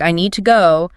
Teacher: >> But in a normal sentence like I need to go, you almost never hear twos. You hear the weak form with the schwa sound.